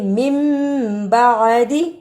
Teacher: نون ساکن کو میم سے بدل کر پڑھنا ہے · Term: اقلاب